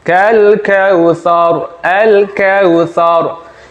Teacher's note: Kemudian yang ketiga, huruf ro ketika di akhir ayat dibaca sukun, sebelumnya ada fathah, maka ini termasuk bacaan tafkhim, harus tebal.